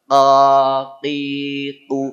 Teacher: q o tanpa monyong karena dia enggak ada urusan dengan bibir huruf qof ini enggak ada urusan dengan bibir suaranya di belakang